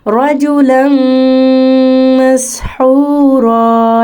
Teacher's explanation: एक और मिसाल है रजुलन मसहूरा, ये भी तनवीन के बाद मीम आ गई है, हरूफ यरमलून में से मदगम करें यानी मिलाएं, मिक्स करें लाम को मीम के साथ और गुन्ना भी करें